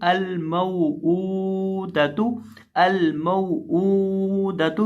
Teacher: अब यहाँ जो वाव है, वाव साकिन से पहले ज़बर है, तो यहाँ हम वाव की वजह से मीम को खींचेंगे नहीं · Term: हरूफ़े लीन